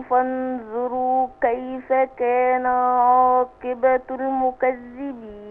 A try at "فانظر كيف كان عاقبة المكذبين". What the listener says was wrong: لا، الراء مش مضمومة، فانظر كيف عاقبة المكذبين.